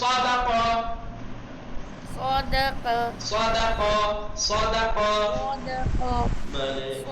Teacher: तेज वाली सीटी नहीं आनी चाहिए जैसे सीन में आती है। अदा करते वक्त सीटी सीटी की आवाज ना हो, आवाज ना हो। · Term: स्वाद